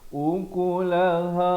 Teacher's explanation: ha makhrajnya dipangkal kerongkong